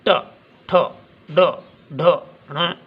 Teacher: री, अब री का उच्चारण या ट, ठ, ड, ढ, ण और षटकोण वाला स, इनका उच्चारण कहाँ से होता है? हमारे दांतों के साथ जो खुरदरा स्थान है वहाँ से होता है, इसलिए उसे हम क्या कहते हैं? मूर्धा या मूर्धन्य।